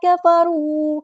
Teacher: کاف باریک ادا کریں گے، واو مد آ گیا تو الف کے برابر لمبا کریں گے